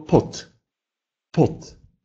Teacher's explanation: «Д», как и «б», в конце слова произносится как «т», оглушается.